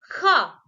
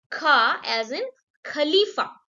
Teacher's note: If we add a breathe or a h sound in ka, it will become kha.